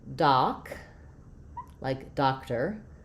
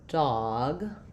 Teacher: for doc, no rounding, more open